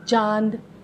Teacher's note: अनुनासिक ऐसे स्वरों का उच्चारण नाक और मुंह दोनों से किया जाता है, तो वो कहलाता है अनुनासिक।